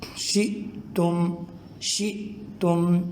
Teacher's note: شِئْتُم، شِئْتُم، تو یہاں پر بھی دیکھیں حمزہ کے اوپر جزم ہے، اس کو ذرا جھٹکے کے ساتھ ادا کریں گے۔